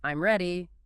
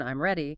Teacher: If you say it with a falling tone, I'm ready, it's a statement, but if you say it with a rising tone, I'm ready, it becomes a question even though the words are identical. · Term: intonation